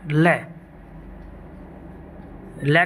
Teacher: लय, लय को पार्श्विक व्यंजन बोला जाता है। पार्श्विक व्यंजन जो कि जीभ के पार्श्व भाग से बोला जाता है, इसलिए इसको पार्श्विक व्यंजन बोलते हैं।